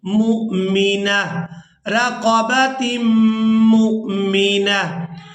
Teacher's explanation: وقف کی صورت میں ایک آنکھ والی تا ہے، یہ ہا میں بدل جائے گی اور ساکن ادا ہوگی